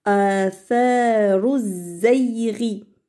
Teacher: on fait la liaison, mais de ra à zay. Il n'y a pas de L. Parce que c'est ici, c'est al-shamsiya.